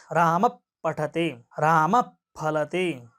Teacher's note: तो वो जो उपधमानीय है उसका उच्चारण स्थान ओष्ठ है, वहां होंठ चल रहे हैं आपके।